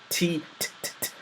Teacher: hand in front of your mouth and you say t t that little exhalation of air is a characteristic of the letter T especially when American speakers are pronouncing the letter T